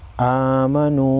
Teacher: واو مدہ ہے، الف کے مقدار کھینچیں گے